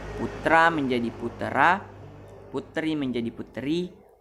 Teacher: perubahan bunyi dengan jalan menambahkan bunyi vokal tertentu di antara dua konsonan untuk memperlancar ucapan. Bunyi yang biasa ditambah adalah bunyi vokal lemah. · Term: anaptiksis